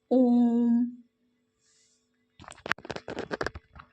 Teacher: इनके उच्चारण में दीर्घ से भी अधिक समय लगता है। अर्थात तिगुना समय लगता है। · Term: प्लुर स्वर